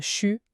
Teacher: il y a des contractions très fréquentes à l'oral, comme chu pour je suis